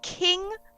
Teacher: It's 2 different types of Ks. The word king is produced with a frontal K